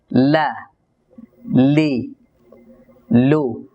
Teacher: লাম হরফটিকে উচ্চারণ করার সময় জিহ্বার আগাটা খুব পাতলা ভাবে লাগবে উপরের তালুর সাথে